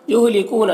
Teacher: یہاں پر واو مدہ ہے، نون میں اخفا ہو رہا ہے